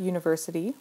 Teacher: the word university starts with a u which is a vowel but it has the Y sound and Y is a consonant sound